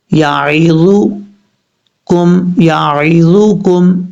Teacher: اوپر والے دانتوں کے اندرونی کنارے سے لگے اور زبان کو اوپر کی طرف اٹھائیں گے تو ذا پڑھا جائے گا